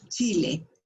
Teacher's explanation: Y si coloco la lengua hacia atrás, pegada hacia el paladar, Chile, me sale neutro